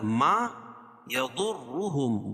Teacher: ضاد کو موٹا پڑھیں گے، کیوں؟ اس لیے کہ حروف مستعلیہ میں سے ہے